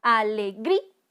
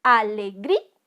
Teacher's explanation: está la mayor entonación de voz en la penúltima sílaba